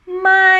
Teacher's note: when talking about a falling tone, it's like you climb the hill and then you go down. So that the symbol, it looks like a mountain or upside down V.